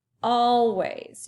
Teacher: you say the first chunk all a little bit louder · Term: syllable stress